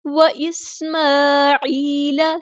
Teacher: وَإِسْمَاعِيلَ، سین کی ہم واضح کریں گے، عین کو وسطی حلق مڈل تھروٹ سے ادا کریں گے، اور لام کے زبر کو ہم لمبا نہیں کریں گے، یہاں پہ یا مد آئی ہے تو مد اصلی ہوگی۔